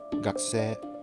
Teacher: Between two voiceless consonants, your vocal cords simply stop vibrating. So the vowels I and U only takes up the time for a beat, and their sound is completely omitted. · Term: vowel devoicing